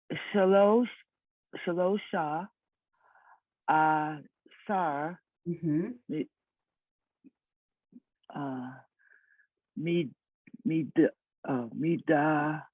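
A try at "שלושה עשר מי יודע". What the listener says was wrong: Midaya, perfect, exactly.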